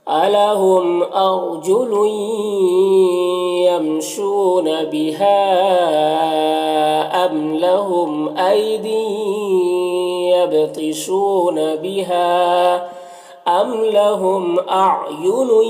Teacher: اور یہاں پر ام کی میم میں اظہار شفوی ہو رہا ہے، لہم کے میم میں بھی اظہار شفوی ہو رہا ہے۔